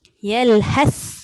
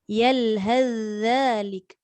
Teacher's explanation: Kalau zal, dia tidak ada angin. Dia ada suara.